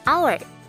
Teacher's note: Di sini kata hour berawalan huruf H, tapi ketika diucapkan dalam bahasa Inggris bunyinya menjadi hour. Pengucapan huruf awalnya adalah O, bukan H, yang mana huruf O merupakan vowel sound.